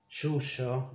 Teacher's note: Remember that we pronounce in Argentina, we pronounce this as sh. like this sequence in English.